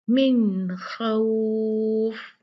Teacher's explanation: ये नून है साकिन, इस पे सुकून है तो नून को क्लियर पढ़ा जाएगा।